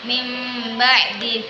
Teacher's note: Iqlab, artinya membalik, apabila ada nun sukun atau tanwin bertemu dengan huruf ba, maka hukum bacaannya disebut iqlab. Cara membacanya dengan menukar nun sukun dengan mim.